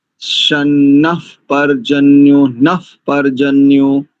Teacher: संहिता की दृष्टि से प्रथम विसर्ग का होगा आपका उपध्मानीय